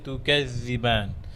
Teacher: জালের জন্য আওয়াজ বন্ধ না হয়